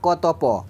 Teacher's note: क, त, प इसमें कोई कंपन नहीं होता, उतना कंपन नहीं होता। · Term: अघोष